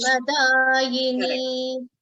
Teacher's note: This ma gets doubled up. Ra will not get doubled.